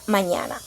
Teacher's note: Aquí la parte del aire pasa por la cavidad nasal